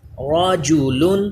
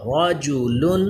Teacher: را پر پڑھا جائے گا کیونکہ زبر ہے. لام باریک ہوگا.